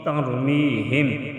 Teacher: ترمیہم، تارا زبر تر، میم یا زیر می، ہا میم زیر ہم، ترمیہم. تر، را کو ہم موٹا ادا کریں گے، می کی یا مدہ ایک الف کے برابر کھینچ کر پڑھیں گے